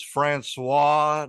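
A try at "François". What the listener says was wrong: Francois. Francois, you need to roll your R's. Roll the R.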